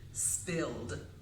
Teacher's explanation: Let's take that word spill. It ends in the L sound, which is voiced. So it would have the regular D sound for that ED ending.